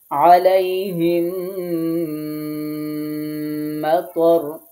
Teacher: মিম সাকিনের পরে মিম আসছে, এজন্য আমরা এখানে তাসদিদ দিয়ে গুণনা সহকারে পড়েছি। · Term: মিম সাকিনের ইদগাম